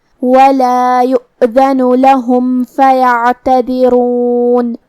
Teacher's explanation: عین کی ادائیگی حلق کے درمیان والے حصے سے ہے، تو ہم عین کو ہی سے پڑھیں گے، جو کہ اس پہ جزم ہے، لہذا ہم عین کو ظاہر کریں گے. · ہم حرف الرا کو بھاری آواز میں پڑھیں گے. آخر میں نون پہ رکیں گے تو اس پہ جزم سے رکیں گے، لہذا ہم نون کو ظاہر کریں گے